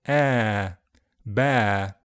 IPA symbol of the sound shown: ɛː